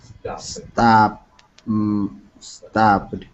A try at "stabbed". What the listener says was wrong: Stabbed. Stabbed. D. It ends up with a D sound, not a T sound. Stabbed.